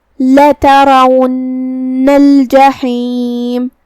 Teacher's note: را پہ زبر ہے تو را کا حکم ہے تفخیم. ہم اسے بھاری آواز میں پڑھیں گے